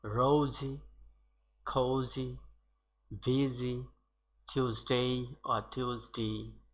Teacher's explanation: this SY or S is pronounced as Z, that is capital Z